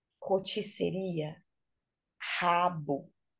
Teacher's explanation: R no início da sílaba, em português, tem o som aspirado.